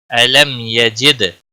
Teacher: علم علم یجد، دال پر قلقلہ ہوگا، دال ساکن ہے، جیم کے نیچے زیر ہے. علم یجد، دال ساکن پر قلقلہ ہوگا